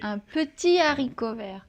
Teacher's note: haricot vert, pas de liaison ni d'élision, c'est un H aspiré